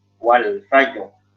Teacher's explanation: kalau rohnya itu sebelumnya sukun, sebelumnya fathah, maka rohnya dibaca tafkhim. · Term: tafkhim roh